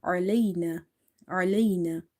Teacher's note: Ain is from the middle of the throat because this is halkiya letter. So try to say it from the middle of the throat. · Before ya sakin, if you see fatha, here ya is lean.